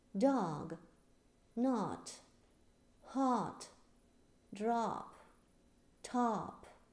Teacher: По-американски мы читаем более открытым и более протяжным звуком